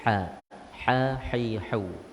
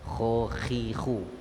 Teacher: Walaupun makhraj dia sama tempat keluar, di kerongkong, kita punya bahagian al-halqu, tetapi tingkatan dia berbeza. Ha pertengahan, kha di hujung.